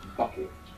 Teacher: make the b in English like bucket and you will see that paper move with that burst of air that come through it that hard B in English is a plosive sound it means